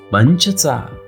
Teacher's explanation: पुढचे अनुनासिक आहे न, जसे पंच. पंचमध्ये देखील च चा उच्चार आपण न सारखा किंवा नाकातून करतो.